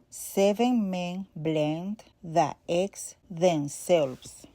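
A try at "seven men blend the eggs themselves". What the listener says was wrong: Since Spanish doesn't have a short E, her short E sounds more like the E, very close to the long A. It's between the short E and the long A. Instead of 7 men, she says 7 men. Instead of So I would need to lower my chin more, and relax under the chin.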